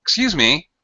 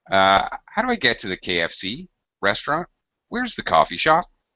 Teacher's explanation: the drop rise intonation, very high highs and low lows, and sudden changes, not more fluid like when we're normally talking, like I'm talking now.